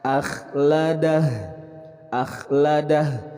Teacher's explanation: Kemudian huruf kha lebih seperti kayak kita berdahak.